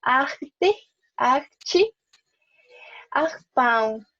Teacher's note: Antes de uma consoante, só J. También, cuando está antes de una consonante, va a sonar como una J, pero una J más, como decir, francesa